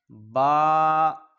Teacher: دونوں ہونٹوں کے تر حصہ سے ادا ہوتا ہے